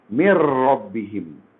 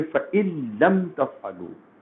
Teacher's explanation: مکمل ادغام ہوگا. نون ساکن یا تنوین بالکل باقی نہیں رہے گا، ختم ہو جائے گا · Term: ادغام کامل